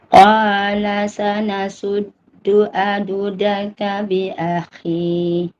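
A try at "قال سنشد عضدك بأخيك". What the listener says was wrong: Ada huruf kaf tu, bi akhik.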